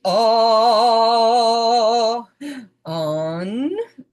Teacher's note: We do it low pitch. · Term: short O sound